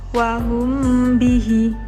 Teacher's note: Ada huruf mim sukun juga bertemu dengan huruf ba, maka mim sukun dibaca samar-samar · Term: ikhfa syafawi